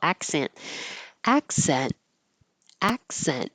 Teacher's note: You won't hear the K or the T. Your tongue just goes to that position, accent, and holds it.